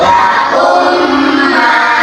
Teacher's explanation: cara membacanya memasukkan mim sukunnya ke huruf mim yang berharakat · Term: idgham mimi